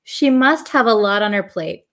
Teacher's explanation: this T in lot becomes a flap T so it almost sounds like a d